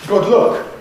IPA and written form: ˈgʊd ˈlʊk (Good luck)